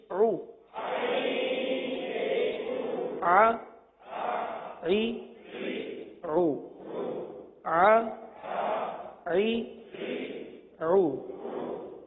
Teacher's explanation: وسط حلق سے ادا ہونے والا یہ حرف عین ہے